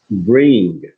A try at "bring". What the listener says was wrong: Bring. Bring. Not bringer, just bring. You have to pronounce the G, but very softly. Not bringa, but bring. When you read together, it makes sense. Like some students bring sandwiches. You say bring sandwiches.